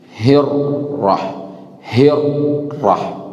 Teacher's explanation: untuk ra ini membaca ra-nya itu cuman disebut takrir, 2 geletar saja.